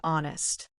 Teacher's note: The h is silent, right?